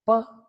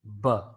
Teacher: P is a voiceless, bilabial, plosive consonant sound. Whereas B is a voiced, bilabial, plosive consonant sound.